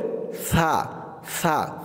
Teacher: তো দেখুন আপনারা সা আলিফ জবর, সা, সাটাকে যখন বলবেন তখন আওয়াজটাকে একদম নরম করে আনবেন, জিব্বার মাথা উপরের দাঁতের মাথার সাথে লাগবে, বলতে হবে সা সা, একদম পাতলা করে সা আলিফ জবর, সা।